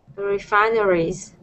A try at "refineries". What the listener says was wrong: Uh-huh. One more time.